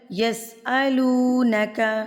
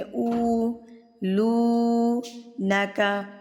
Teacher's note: لو کو میں نے لمبا کیا ہے، یہ واو مدہ تھی، اور واو مدہ کا مطلب تھا اس کے پاس 2 او کی ساؤنڈ تھی